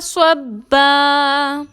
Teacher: صبا میں با مشدد کو مضبوطی اور دباؤ کے ساتھ ادا کریں گے